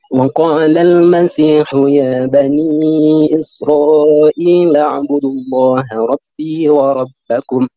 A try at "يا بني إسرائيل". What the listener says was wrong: Ini kurang panjang iyahnya. Katanya Bani kamu salah karena ini ada tanda panjang ya. Terus Israel, Isra-nya panjang. Panjang itu, ya.